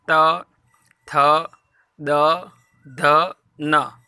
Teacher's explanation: त वर्ग बोलने के समय हमारी जो जीभ है वो दांत को स्पर्श करती है, इसलिए इसको दंत्य कहते हैं